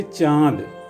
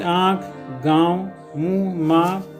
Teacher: अनुनासिक वह ध्वनि जिसका उच्चारण नाक और मुंह दोनों से किया जाता है